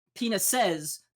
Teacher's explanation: She goes, lesbians don't have penises, which first of all, like penises, the emphasis is on the first syllable, right? She's putting the downbeat on the last syllable. It's penises the way she say it, which is not how you say that word.